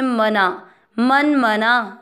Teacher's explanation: आधा न मन म में अ मिक्स करेंगे मना मन मना ना दीर्घ बोला जाएगा